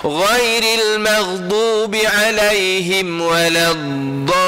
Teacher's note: Satu lagi suara pun jangan ditahan. Alirkan suara itu dia sifatnya rakhawah. Kena alirkan suara.